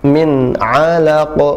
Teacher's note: nun sukun bertemu dengan huruf halqiyah, huruf tenggorokan. Jadi jelas bacanya, izhar